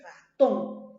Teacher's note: Entonces la mayor fuerza de voz está en ton.